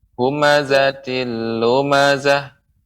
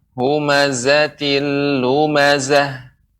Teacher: huruf zai ini lebih banyak dia getarannya